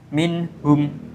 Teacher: Contoh pada izhar khalqi pada ayat keempat minhum, ya, dibaca terang dan jelas di kerongkongan